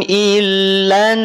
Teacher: semula dia fathah tapi berubah jadi sukun ketika wakaf karena sebelumnya ada fathah maka R dibaca tebal